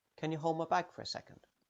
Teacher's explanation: In the last phrase, the D on hold will disappear.